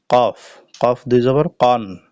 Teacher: কফের মাখরাজ হলো জিহ্বার গোড়া তার বরাবর উপরে তালুর সাথে লাগাইয়া একটি হরফ উচ্চারিত হয়